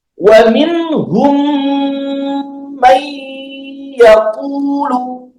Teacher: Kita masukkan huruf mimnya ke mim yang kedua sehingga muncullah yang namanya dengung nantinya. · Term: idgham mimi